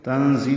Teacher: تنزیل میں نون ساکن کے بعد زا آنے کی وجہ سے اخفا ہے. زی تیز صفیر کی آواز سے زا ادا کریں گے، زی پڑھیں گے.